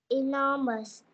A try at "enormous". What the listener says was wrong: No. Bạn sai nhé. Mình i, cái âm này, cái âm đầu tiên âm i, i. Enormous. I. Enormous.